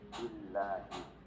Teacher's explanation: sebelum Allah ada kasroh berarti dibaca tipis